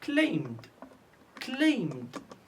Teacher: So we say absorbed, absorbed. Next one, M is a voiced consonant, therefore we should pronounce ed, d. So we pronounce it claimed, claimed.